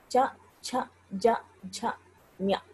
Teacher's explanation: ఆ నాలుక రెండు చివరలు, ఈ వైపు రెండు చివరలు కూడా ఆ పైన దంతాలకు పైన ఉన్నటువంటి భాగాన్ని తగులుతూ ఉన్నాయన్నమాట. కాబట్టి దాన్ని తాళవ్యాలు అని పిలిచినారు.